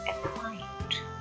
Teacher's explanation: इसी तरह अपॉइंट, इसमें भी जो आ की साउंड है वो थोड़ी सी स्लो है और जो लाउड साउंड है वो है पी